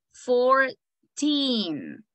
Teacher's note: The emphasis is going to be in teen.